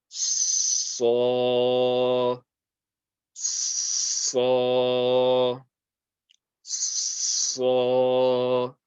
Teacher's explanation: So that means we are going to put lots of pressure on the makhraj. For the Sad, it's the tip of the tongue touching the bottom two teeth. Put lots and lots of pressure there, and slowly release the sound, and it's going to be so, so, so.